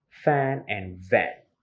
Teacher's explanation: Labiodental sounds means that when the top front teeth touch the lower lip. Okay? The top front of your teeth touch the lower lip.